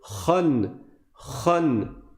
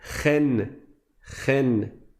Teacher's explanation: En fait, c'est comme si tu écrivais un kha avec une fatha suivi d'un noun avec un soukoun. Donc le kha, il est grave. Et par conséquent, le tanwin va être grave.